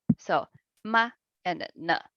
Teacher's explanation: Because they are both neutral tone, right? You didn't see any tone marks on it. So that's why we need to read it short.